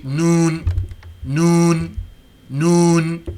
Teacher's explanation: So that Ghunnah, that sound that comes out of the nose, is built into the noon and it's built into the meme. If one were to squeeze his nostrils closed while pronouncing the noon or the meme, the Ghunnah would not appear, and the difference in sound can be noticed.